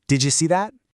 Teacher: The did sound at the end of did and the y sound in you kind of merge together to make a ja sound. So didja becomes didja, as in, did you see that?